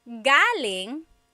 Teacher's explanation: So galing, the emphasis is on the first syllable. That means coming from.